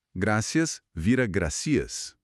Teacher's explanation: O ceseu é o fenômeno onde tanto o Z quanto o C soam exatamente como um S comum.